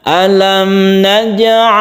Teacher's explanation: Qolqolah Sugro kalau di tengah kita pantulkan gymnya